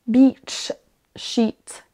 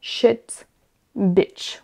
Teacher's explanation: Vous voyez qu'il y a une toute petite nuance quand même dans la durée, la longueur de la syllabe.